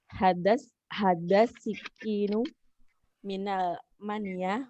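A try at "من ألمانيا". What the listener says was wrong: Hati-hati dengan al. Apakah ada al atau tidak? Ini al atau bukan? Ini alif lam bukan, dan ini ada alif yang tidak. Almania, bacanya Almania itu bukan alif lam. Makanya ada kepalanya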